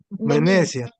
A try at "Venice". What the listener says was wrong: No, it's not Venezia, Venice.